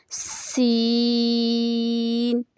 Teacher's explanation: سین کی ادائیگی میں سیٹی کی آواز لازمی نکالنی ہے